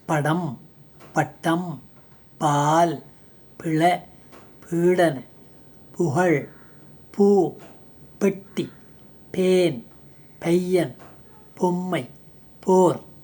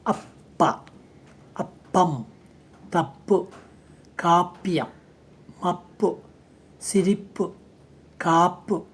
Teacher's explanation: இது ஒலிப்பிலா ஈறுதல் வெடிப்பொலி, வாய்ஸ்லெஸ் பைலேபியல் ப்ளோசிவ்